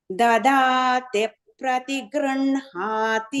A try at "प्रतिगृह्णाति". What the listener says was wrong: No, grinhati. Gr has to go down. Dadate prati grinhati.